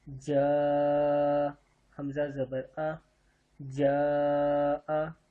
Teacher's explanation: یہاں ایک قانون اور آپ کو بتاؤں، جب مد یہ جو اوپر ہوتا ہے اس کو مد کہتے ہیں. جب اس سے آگے حمزہ ہو تو اس کو 4 الف کے برابر لمبا کرتے ہیں